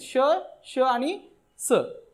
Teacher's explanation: किंवा याला दुसरं नाव आहे घर्षक, म्हणजे घर्षण होतं आणि त्याच्यातून उष्णता निर्माण होते म्हणून त्यांना उष्मे म्हणतात. अशी ही 3 व्यंजने आहेत, श, श आणि स.